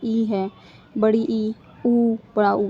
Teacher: इसमें हमारा मुख जो है बहुत ही माइनर सा खुला रहेगा। पूरा मुंह नहीं खुलता। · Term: संवर्त